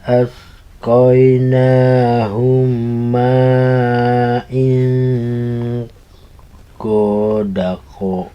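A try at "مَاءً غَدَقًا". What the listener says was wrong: Bukan main tapi ma'an.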